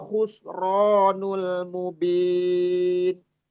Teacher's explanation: khonnya yang kasar yang terdengar tebal karena punya sifat istilla